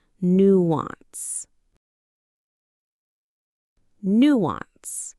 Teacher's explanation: The stress is on the first syllable, nuance.